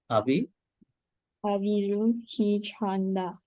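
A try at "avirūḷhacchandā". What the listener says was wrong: Avirul Hitch Chanda. Not Avirul Hichanda. Avirul Hitch Chanda. One is non-aspirate, the first one. Second one is aspirate. Tekina bija avirul hitch chanda.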